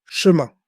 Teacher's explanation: The ending sound goes through the nose, so listen for that soft nasal vowel.